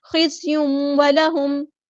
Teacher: زا باریک لائٹ ہے، سختی سے ادا کریں گے. تنوین کی آواز جو ہے واو میں مکس اپ ہوگی، یہاں پہ ادغام ہو رہا ہے، ادغام مع الغنہ.